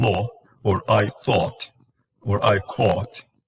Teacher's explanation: It is mid, back, tense, rounded.